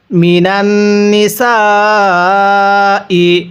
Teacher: নুন নুন জবর নান লাগিয়ে গুন্নাহ করব, কারণ মিমে নুনে তাজদিদ গুন্নাহ করা ওয়াজিব এবং এই সিনের মধ্যে আমরা 4 আলিফ টান দিব।